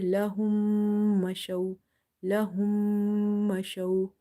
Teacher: So after meme sakin, if you see another meme, or in simple, you can remember that if you see the shadda on top of meme, you will do nasalization in such meme sound.